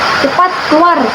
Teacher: itu kan intonasinya turun dan tegas karena itu adalah kalimat perintah dan ada emosi di dalamnya.